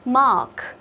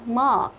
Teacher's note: A dài giống như kiểu đi khám nha sĩ, chúng ta sẽ há to miệng ra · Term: âm A dài